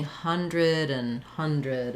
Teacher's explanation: basically, we don't say the a or the d sounds